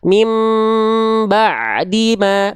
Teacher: Jadi cara melafalkan mim sukun ketemu ba, ikhfa syafawi, itu dilafalkan dengan merapatkan kedua bibir, tapi dia gak nekan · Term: al-intibaq ma'a adamil jaz